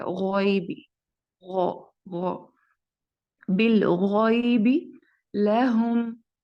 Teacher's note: रब्बहुम बिल गैबि लहुम, इसमें जो मीम है इसको स्ट्रेच किया जाता है, और क्योंकि इसके बाद बा है, और इसके बाद देखें कि बा के बाद आपने जो अलिफ है इसको स्किप करना है, और बा के फौरन साथ ही आपने लाम को अटैच कर देना है, बिल। और गॉइन जो है इसको भी पुर पढ़ा जाता है, गॉइबी, गौ, गौ, बिल गॉइबी लहुम।